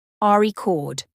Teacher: record is a noun when the stress is on the first syllable